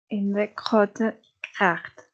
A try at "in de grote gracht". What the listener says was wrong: Yeah, because of the air, you're kind of saying KG, so kracht, kracht, instead of gracht. So try to leave the K, so kracht, try to leave it out and say echt gracht. So instead of like I kind of hear the K and then a G, so kracht, and